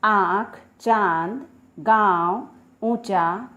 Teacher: उच्चारण करते समय हमारे मुंह और नाक दोनों का उपयोग हुआ है